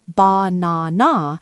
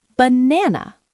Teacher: The first and last A become schwas.